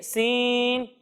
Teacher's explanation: جب ہم سین کی ادائیگی کریں گے تو اس کے اندر سیٹی کی آواز آئے گی